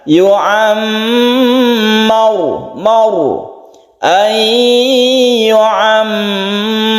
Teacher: Ro ini disebut bacaan tafkhim atau mufakham karena dia itu sebelumnya ada fathah, jadi ditebalkan